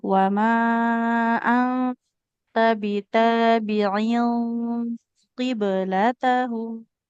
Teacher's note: qiblatahum ini ikhfanya harus tebal.